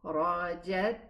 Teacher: it has a running sound and it also has a whispering sound, meaning that there's air. If I put my palm in front of my mouth when I'm pronouncing this letter, I will feel the running air.